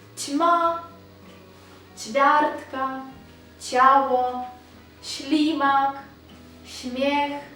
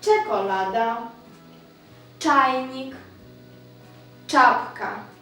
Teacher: якщо тут ми говорили м'якенько чма чвяртка чаво шлімак шмех то тут вже буде твердіше чколада чайник чапка